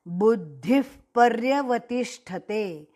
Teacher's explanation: विसर्ग के आगे प से शुरू होने वाला शब्द पर्यवतिष्ठते, इसलिए कंस में आधा फ जैसा विसर्ग का उच्चारण लेना